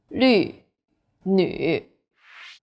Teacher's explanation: The U sound is like the French U. Your lips should be round and pouting.